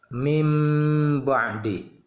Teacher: maka bacaannya makhraj huruf nun itu masuk langsung ke makhraj mim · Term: iqlab